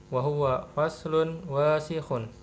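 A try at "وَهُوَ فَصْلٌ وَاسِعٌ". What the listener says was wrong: Wasi'un. Bukan wasihun ya. Wasi'un ain.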